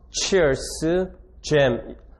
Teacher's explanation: briefly stopping, 잠시 막음으로써 airstream, 기류를 완전히 막음으로써 and then releasing, 그리고 조음 기관을 개방시킴으로써 slightly, 약간만 so that 그 결과로 friction, 마찰이 생기게 된다. 이러한 소리들은 stop, 폐쇄음으로 시작해서 finish as fricatives, 마찰음으로 끝나게 된다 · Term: 파찰음